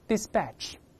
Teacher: 我们分别读一下，注意后面要浊化